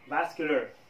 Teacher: هذا الـ R قد لا يبدو في نطق الـ Irish accent vascular, لكن الـ American accent تظهر هذا الـ R وتقول vascular